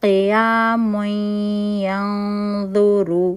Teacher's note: نون تنوین چھپا ہوا تھا اس تنوین کے اندر. نون کے بعد ہم نے فوراً دیکھا تو یا حرف آ رہا ہے، یہاں پہ ہم اس کا ادغام ناقص بالغنہ کریں گے